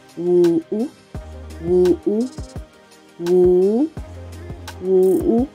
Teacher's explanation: it's like a falling tone and then a rising tone. Like, you are coming down and then you are going up. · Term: falling and a rising tone